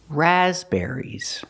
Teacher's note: syllable there's only one stress it's on the first syllable raspberries the second syllable is not ER it's air air like hair and chair